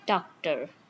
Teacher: Then t, it is a stop, voiceless, aspirated, thanda, that is cold. Then d, stop sound, voiced, it is not aspirated